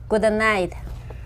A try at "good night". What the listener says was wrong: Not duh. Good night.